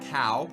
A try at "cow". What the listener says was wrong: I don't think you need to open your mouth near as much as you're opening in this area.